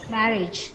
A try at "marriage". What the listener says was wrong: No, the stress is on ma. So you say marriage. Marriage. Marriage.